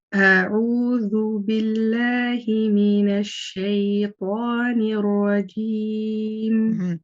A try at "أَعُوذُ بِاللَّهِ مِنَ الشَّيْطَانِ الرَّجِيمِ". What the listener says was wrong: Now remember, because at the moment when you're saying ash-shaytan, your lips are coming out quite a bit. So you're saying ash, right? You're trying to say ash-shay. And then when you're saying pa, the ba part, what's happened?